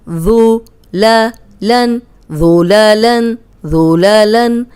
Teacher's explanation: اب ذال نرم ہے، اس میں سیٹی کی آواز نہیں آئے گی